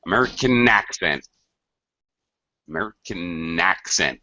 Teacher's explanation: notice the second word it sounds like it begins with the N